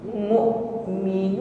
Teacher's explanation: huruf hamzah demikian memiliki sifat syiddah, tertahan aliran suara. Jangan jangan lembek, ya, atau suaranya masih memanjang, bukan tetapi makhrajnya tertutup dengan sempurna.